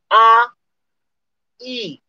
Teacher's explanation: आ में अगला भाग तो नहीं प्रयोग किया गया, पीछे से कुछ उठ के काम होता है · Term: पश्च स्वर